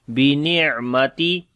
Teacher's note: عین کے اوپر صفت توسط ہے، گلے کے درمیان والے حصے سے پڑھیں گے